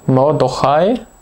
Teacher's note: Und deswegen hat sie ein Kurzvokal, das heißt, wir wissen hier, dieses Kametz muss ein Kametz Ratuf sein, ein kurzes O